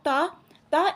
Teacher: दंत्य होगा क्योंकि जो हमारी जीभ है वो दांतों से मिल रही है